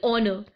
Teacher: in spite of its spelling, the word honor begins with a vowel sound. Therefore, we use an. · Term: silent